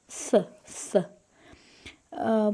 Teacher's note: Yəni necə olur dilin dil biraz dişlərdən önə çıxır. Üst dişlərə ön dişlərə belə ön dişlərdən önə çıxır. Elə tələffüz olur. Yumşaq pəltək tələffüz olur.